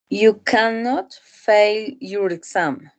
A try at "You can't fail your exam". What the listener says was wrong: You say can't, podemos pronunciar esas contracciones, ¿no? Can't, and you've been studying.